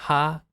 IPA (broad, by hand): ha